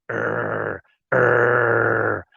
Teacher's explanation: R sounding deep in your throat like an angry dog. If you have a dog and the dog is angry and the dog says er er, it's scratchy down here in the bottom of my throat.